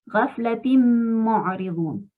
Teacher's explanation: No se ve aquí porque es un tanwin, pero en nuestras mentes tenemos que imaginarnos que en vez de decir gaflatin, es gaflati, y ya directamente leemos lo que sigue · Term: La N muda